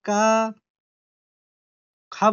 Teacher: महाप्राण जिसको बोलने में थोड़ा ज्यादा जोर लगे